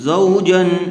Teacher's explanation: یہاں پر اظہار کا قاعدہ ہوگا، یعنی بغیر غنّے کے جلد اظہار کر کے پڑھیں گے